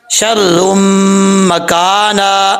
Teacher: 1 الف کی مقدار غنہ کریں گے کیونکہ را کے اوپر 2 پیش ہیں، 2 پیش کے بعد 2 پیش کی تنوین کے بعد میم آ رہا ہے، تو یہاں پہ ادغام یرملون ہوگا، غنہ ہوگا۔